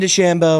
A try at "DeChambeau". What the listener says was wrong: A little more nasally. A little nasally.